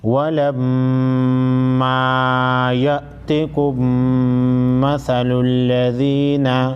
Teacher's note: میم مشدد پر غنہ کریں گے